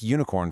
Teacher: It starts with the vowel U, sure, but phonetically, it begins with a y sound, a consonant glide